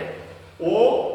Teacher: कंठोष्ठ वर्ण, यानी कंठ और ओष्ठ की सहायता से जो बोले जाते हैं